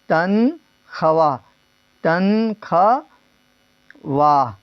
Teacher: واو معدولہ جس واو کو تو لکھا تو جائے لیکن پڑھا نہ جائے